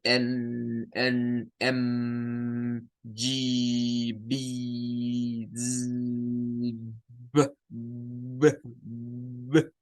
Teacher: Si le hace G, B, Z, B, va a sentir en todos estos vibraciones.